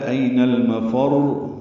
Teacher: را سے ملا دیں گے، را مشدد ہے، این المفر، اور یہ یاد رہے کہ را پہ قلقلے نہ ہو جائیں، صفت تقریر را کی ضرور ہے ، این المفر، ذرا سا رک کر پڑھیں گے۔ اس دن